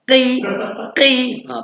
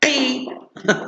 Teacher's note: Qaf bari bawah, qi, pangkal lidah tolak anak tekak dalam